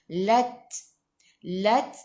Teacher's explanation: Khi biar ada angin, biar menggelegak. Lat ta sifat hurufnya hamas kena ada sedikit sahaja angin, jangan banyak.